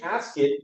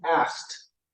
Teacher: Here we've got ask, that ends in the /k/ sound, so you didn't ask/id/, you ask/t/.